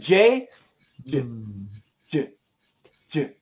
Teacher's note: When we do the J and the CH, the starting position is touching. And when we make the sound, we stop touching.